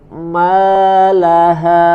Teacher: Harus terasa perpindahan makhrajnya dari hidung ke al-jauf. Malaha. Kalau kita rasakan misalkan masih dari awal sampai terakhirnya masih di hidung, berarti masih belum sempurna, masih semuanya dimasukkan ke dalam hidung, masih digunakan.